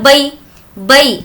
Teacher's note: بئی یہاں پر نہیں کھینچیں گے کیونکہ یا لین کا قاعدہ ہے